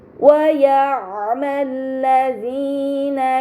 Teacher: lam pada lam syamsiyah tidak dibaca, namun langsung dibaca huruf setelahnya. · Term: alif lam syamsiyah